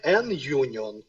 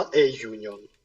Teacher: ми пишемо насправді букву у, але промовляємо ю. Тобто перший в нас звук й приголосний. Значить, ми говоримо не n union, а a union.